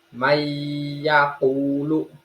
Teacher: Hukum ini dibaca dengan panjang 1 alif atau 2-3 harokat. Dibaca dengung 1 alif atau 2 harokat. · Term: idgham bihuna